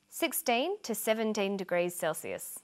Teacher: notice that the two is unstressed